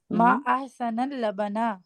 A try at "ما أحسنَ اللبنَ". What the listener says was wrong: ما احسن نہ، یہ یاد رکھیں آپ نے اس کو ایک پیش نہیں دینی ہے، اس کو زبر دینی ہے. ما احسن اللبن.